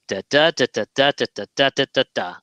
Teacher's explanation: 11 syllables, the first stress on the second syllable